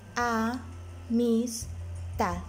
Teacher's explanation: Tal como lo tenemos aquí en el ejemplo, la palabra amistad se divide en a, mis, tad. La sílaba tónica es tad porque es donde se emite con mayor recarga la voz.